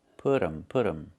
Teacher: The t changes to a fast d.